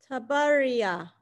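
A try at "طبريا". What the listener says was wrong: Very good, Tabaria. Very good.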